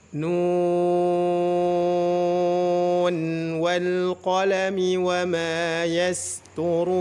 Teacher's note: maka bacaannya harus dibaca izhar dan tetap dibaca 6 harakat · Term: izhar riwayah